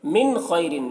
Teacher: मिन खैरिन, नून में इजहार होगा क्योंकि नून साकिन के बाद खा हरूफ हल्की में से है तो नून में इजहार होगा, नून को ज़ाहिर करके पढ़ेंगे। खा को पुर पढ़ेंगे क्योंकि खा हरूफ मुस्तालिया में से है।